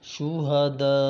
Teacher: مد چار الف کے برابر کھینچیں گے